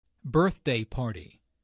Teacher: Notice that the normal stress for a compound noun falls on the first element of the compound.